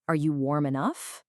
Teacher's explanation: When we genuinely do not know the answer to a yes-no question, our vocal pitch physically rises at the very end. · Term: rising intonation